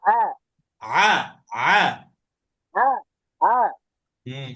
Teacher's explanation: আইন আর হা গলার মাঝখান থেকে, কণ্ঠনালীর মাঝখান থেকে গলাকে চেপে সংকুচিত করে।